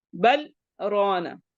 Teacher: तो यहाँ पे इसको बर्राना नहीं कर सकते, बल स्टे करें, मतलब सांस नहीं, मतलब उसमें पॉज दें थोड़ा सा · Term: सख्ता